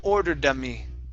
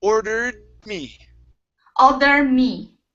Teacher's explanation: your tongue will go up to the top of your mouth for the D sound and it will stop there so that you can close your mouth